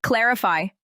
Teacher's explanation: Stress is on the first syllable. Clarify, not clarify.